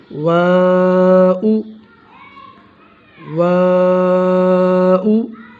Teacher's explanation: Number 3 واو غیر مدہ، دونوں ہونٹوں کے گول کر کے ناتمام بند کرنے سے، دونوں ہونٹوں کو گول کر کے ناتمام بند کرنے سے، یعنی کہ ہونٹوں کو تو گول کرنا ہے لیکن ان کو مکمل گول نہیں کرنا۔ اکثر حضرات اس کو واو پڑھتے ہیں، یہ واو نہیں ہوتا بلکہ اس کو گول کرنا ہوتا ہونٹوں کو، واؤ واؤ۔